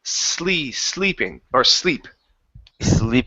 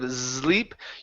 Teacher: this is an unvoiced S instead of a voiced s so you said sleeping with a z sound